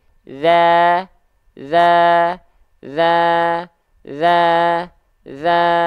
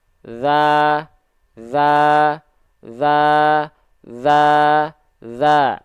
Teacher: jadi ketika dia dibaca tipis itu dia sambil senyum tapi kalau misalnya dia tanpa senyum kedengarannya pasti kurang tipis